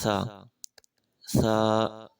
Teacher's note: تو سا کے لیے آپ کو زبان کی نوک اوپر والے جو دو دانت ہیں اس کی سرے سے زبان کو ٹچ کرنا، تو اس سے سا ادا ہو جاتا ہے